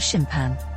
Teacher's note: There are two ways I can put across pronunciation of that, the way I hear most commonly here in America, and how I pronounce it, as something along the lines of shimpan. Not quite an /m/, not really, but an unreleased, slightly held /p/.